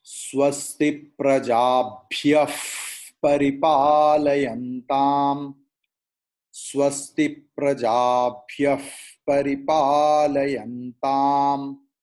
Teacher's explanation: Now one thing, if Visarga is following Pakara or Phakara, P or PH, then Visarga's pronunciation will be fa, not pa, like fruit, fa.